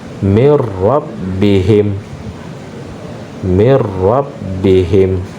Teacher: Jadi nun sukun dimasukkan atau dilebur ke huruf ra